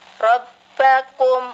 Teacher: Beda lawannya istifal. Istifal pangkal lidah kita datar, biasa, rileks. Maka dari itu bacaannya hurufnya tipis atau ringan.